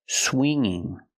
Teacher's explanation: The ng does not make the g sound. It makes a different sound. It makes a sound in your nose.